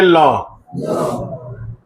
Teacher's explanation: ल का उच्चारण करते समय जीभ मसूड़े को स्पर्श करती है। जीभ मसूड़े को स्पर्श करती है। · तो ऐसा व्यंजन जिसका उच्चारण हम करते हैं तो जीभ जो है अंदर से जो हवा आती है वो जीभ के अगल-बगल से निकलती है। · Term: पार्श्व, पार्श्विक